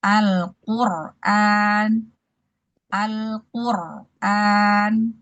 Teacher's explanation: Di sini contohnya Al-Qur'an, Al-Qur'an. Jadi ro sukun sebelumnya dhammah itu dibaca tebal.